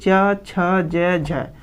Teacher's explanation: ठीक है, आप लोग ध्यान रखिएगा कि मतलब कि जब हम च, छ, ज और झ का उच्चारण करते समय जिह्वा ऊपर उठकर, जिह्वा जब जो हमारी जिह्वा होती है ऊपर तो उठती है और तालु में जाके स्पर्श करती है, और जो उसके बाद क्या होता है, फलस्वरूप हवा को मुख से बाहर निकलने में संघर्ष का सामना करना पड़ता है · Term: स्पर्श संघर्षी